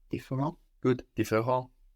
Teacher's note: So we wouldn't hear the last T.